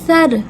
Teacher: ٹھیک ہے، سا کو ہم پر کر کے موٹا کر کے نہیں پڑھیں گے. اور سر، سا کی ادائیگی زبان کو تھوڑا سا باہر نکالتے ہیں، دانت سے تھوڑا باہر نکالتے ہیں، نرمی سے ادا ہوتا ہے یہ